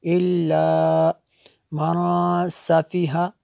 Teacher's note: نون ساکن کے بعد سین حروف اخفا میں سے ہے، اس لیے یہاں پہ اخفا ہوگا